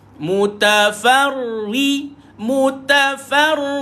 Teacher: bila ra sabdu di bawah dia dibaca dengan nipis